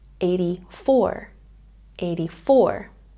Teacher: we have a stress on the last syllable